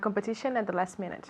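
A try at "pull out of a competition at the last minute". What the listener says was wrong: Okay, competition, ata. Aquí tenemos ese sonido. Again, ata. Okay, so remember, at ends with a T, the next word begins with the TH, así que esa T desaparece. Lo hacemos en una palabra, ata. Okay, no decimos at the. Nobody talks like that. Nadie habla así. En lenguaje natural es hasta.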